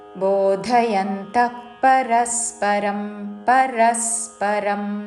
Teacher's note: విసర్గ తర్వాత పక్కనున్న పదములోని ప అందుకుంటూ శ్వాస వదిలి ఫ లాగా పలుకుతూ